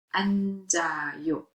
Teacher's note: The 지읒 sound is carried over. It's pronounced 앉아요.